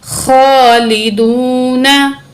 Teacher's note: एक अलिफ की मिकदार वाव को खींच के पढ़ेंगे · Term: हरूफ़ मद्दा